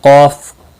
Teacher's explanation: کاف کے اوپر کھڑی زبر ہے ایک الف کے برابر کھینچ کر پڑھیں گے